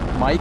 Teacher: And M is a voice, bilabial, and nasal. Voice meaning that the vocal cords vibrate.